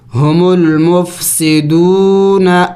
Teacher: دون کو لمبا کریں گے اس لیے کہ واو مدہ ہے